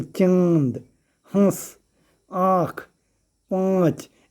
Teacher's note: जैसे चांद, हंस, आँख, पाँच, इसमें थोड़ा सा नाक का यूज हो रहा है प्रोनाउंसिएशन करते समय में, तो इसीलिए इसको अनुनासिक कहते हैं।